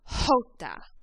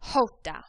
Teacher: the Spanish J makes that H sound, like our English H, but it's very strong. That's why this name of the letter is titled Jota.